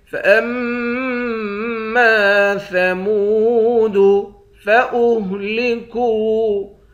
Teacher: کاف کو واو کے ساتھ ملا کر 1 الف کے مقدار کھینچیں گے، واو حروف مدہ ہے۔